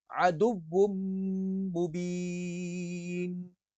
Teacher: واو اور میم کو ایک ساتھ جوڑ کر پڑھیں گے کیونکہ یہاں پر تنوین کے بعد میم ہے تو ادغام مع الغنہ ہے